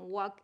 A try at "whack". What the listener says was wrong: And let's get that vowel just because, you know, I want to practice a little bit more with that. Whack. Whack.